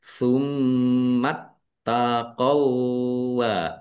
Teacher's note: Tummatqo t-nya dibaca dobel ada tasdidnya ditekan dan ditahan biar tampak dobelnya.